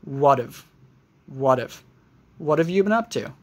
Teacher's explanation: we might not pronounce the H in have.